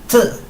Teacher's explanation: la T sí se dice T, pero se dice un poquito como expulsando el aire. T. Un poquito más prolongado.